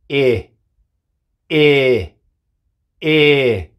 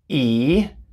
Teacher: Se pronuncia E. Es como entre medio de una I y una E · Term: sonido corto